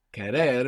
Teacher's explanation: when we say querer, we have the accent on the end, we have the accent on the ending.